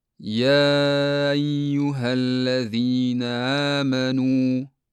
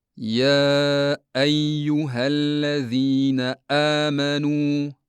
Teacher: Agar ovoz paychalari to'liq yopilmasa, hamza tovushi aniq va tiniq emas, balki juda zaif eshitiladi yoki umuman yo'qolib ketishi mumkin.